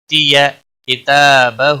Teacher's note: تا کے اوپر اور ہا کے اوپر دونوں کے اوپر مد اصلی ہے، کھڑی زبر اور الٹا پیش، ایک ایک الف کے برابر کھینچ کر پڑھیں گے